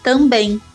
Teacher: Uma escuta atenta nos leva a constatar que não há o encontro dos lábios. O M no final é produzido como um ditongo nasalizado, como em Porém, no inglês, como em cream and ocorre o encontro dos lábios no final das palavras. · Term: nasal bilabial